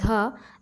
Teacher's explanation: यह एक दंत्य ध्वनि है क्योंकि यह दांत और जीभ के स्पर्श से बोला जाता है